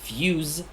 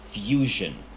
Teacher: The z in fuse, which is more of a z sound, changes to zh in fusion. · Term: consonant mutation